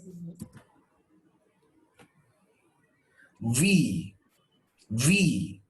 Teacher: When you say this, you will feel the vibration, meaning V is a voiced sound.